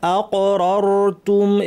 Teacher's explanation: এখানে হামজা শক্ত, কফ কলকলা হবে এবং ভারী, এরপরে দুইটা র আছে, দুইটাই ভারী, রর।